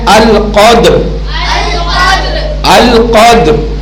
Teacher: را ہلکی سی اپنے مخرج میں زبان کا اس کے ساتھ ملاپ اور ٹچ ہوگا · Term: وقف